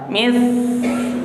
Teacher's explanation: Hamas itu mahmusa, desir, jangan ditelan saknya, lepaskan suaranya ke depan. Mis, biarkan ngalir ke depan napasnya.